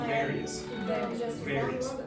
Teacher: She will not close her lips. So this is called a labial, dental sound.